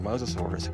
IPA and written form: ˌmoʊzəˈsɔːrəs (Mosasaurus)